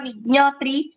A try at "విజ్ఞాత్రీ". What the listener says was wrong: last లో కొంచెం దీర్ఘం ఉంటుంది కదా దీర్ఘం వినపడేలాగా చదవండి అమ్మ